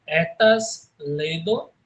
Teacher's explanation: E aqui no latim ele vai ter o mesmo som de E, só sendo fechado, né? Enquanto nós temos a E soa como E aberto, de pé, nós temos o OE soando como lê, né?